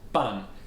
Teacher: Ban Tian Yao, which is a falling tone, Ban, and then Tian Yao, 2 first tone.